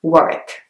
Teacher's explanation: The next one is Warwick. Warwick has a W in the middle, but it's not pronounced